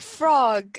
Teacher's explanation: the child does not sound out the last S, like frog instead of frogs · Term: final S sound